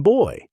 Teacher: Starting from the rounded back vowel, and gliding up to ier.